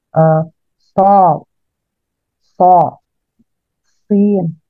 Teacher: Yang pertama adalah assofit, yaitu adalah desis yang muncul karena suara melewati jalur yang sempit atau suara tambahan menyerupai suara burung menyertai suara huruf shofir.